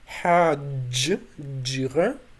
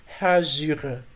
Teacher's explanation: in standard Adiga you have hajjira, so you have j there, but in Abzakh dialect it's hajira, so with fricative instead of affricate.